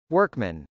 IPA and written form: wˈɝkmən (workman)